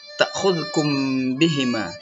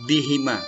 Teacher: Ta'khudhukum bihima, nah, ya, itu yang disebut dengan ikhfa safawi tadi itu, membacanya berdengung, mim matinya masuk ke ba